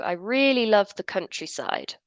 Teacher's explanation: we finish the sentence we use a falling intonation to signal that we finished speaking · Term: falling intonation on statements